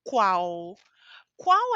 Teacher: quando uma palavra termina em l a pronúncia é u